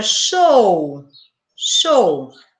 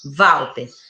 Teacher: Já na palavra Walter, o W é consoante, porque representa o som de V.